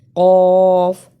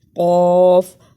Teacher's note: اسے کل نہیں پڑھنا، قوف کو موٹا پڑھنا ہے